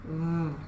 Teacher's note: The letter V is a voiced sound. That means your vocal cords vibrate. It's a rougher sound coming out of your mouth.